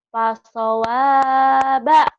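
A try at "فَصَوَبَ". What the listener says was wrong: Panjang ujungnya. Fasawaba.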